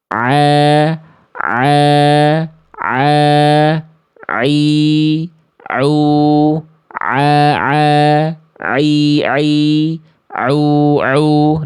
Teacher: di mana makhraj huruf ain dia dilafalkan dari tenggorokan bagian tengah. Dalam istilah tajwid namanya wastul halqi.